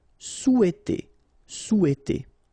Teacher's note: in French we don't pronounce this H, okay? It doesn't phonetically exist here, so you've got sou, after that you've got e, and then t.